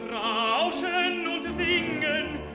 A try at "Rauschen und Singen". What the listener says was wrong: Klein war das wieder, Rauschen. Natürlich darfst du das später irgendwann dann mal wieder zurücknehmen, ein bisschen von der Lautstärke. Aber was ich will, ist, dass der Körper drunter ist, auch wenn du Piano singst und auch wenn du nicht voll aussingst. Weil du rutschst mir zu oft nach oben, ja?